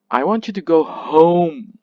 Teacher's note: So the first parts of the sentence is unstressed, yeah? The last word, which is home, is stressed. So the first parts are pronounced weaker and faster, and while the last word is pronounced louder and clearer.